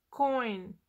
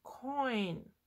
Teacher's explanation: you don't hear oh or e in this you hear o and then you're going to e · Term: diphthong